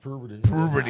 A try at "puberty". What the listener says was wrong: Threw an R in there somewhere.